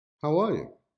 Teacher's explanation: sentence is normally produced as how i am how are you with the focus stress on the word are